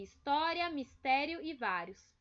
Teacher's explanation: a penúltima sílaba delas que vai ser a mais forte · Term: paroxítonas